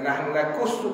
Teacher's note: Nahnu naqussu huruf qaf. Qaf ni ke dalam ke belakang.